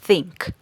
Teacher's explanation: es un sonido interdental porque la lengua debe ir entre los dientes. Además, es como si fuera un sonido de viento, por así decirlo.